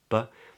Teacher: then we get a B, two lips come together.